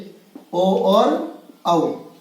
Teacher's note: इनका उच्चारण स्थल हो जाएगा कंठ ओष्ठ, कंठोष्ठ, यानी कंठ और होठ से